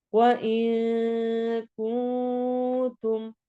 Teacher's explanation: دونوں جگہ پہ اخفا ہو رہا ہے